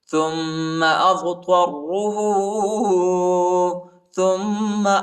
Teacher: فأمتعه قلیلا قلیلا، ادھر اخفا ہے، قلیلا ثم، تا کو میم کے ساتھ ملائیں گے اور غنہ کریں گے، ثم اضطره، حمزہ کو ضاد کے ساتھ ملائیں گے اور طا کو را کے ساتھ ملائیں گے، را کو شدت کے ساتھ سختی کے ساتھ پڑھیں گے اور موٹا پڑھیں گے